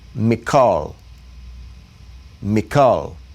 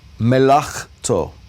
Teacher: it's not going to get the guttural sound, the ch. It's going to get that K sound. · the chaf does get the guttural sound because the dogish is not there